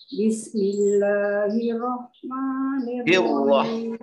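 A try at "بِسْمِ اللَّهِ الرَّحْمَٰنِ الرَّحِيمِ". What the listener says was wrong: Hirroh. Ini yang sering kali tasdidnya roh itu kurang ditekan. Hirroh.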